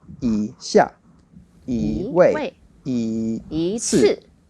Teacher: The rule for that one was once you have E together with a fourth tone, then it changes to a second tone.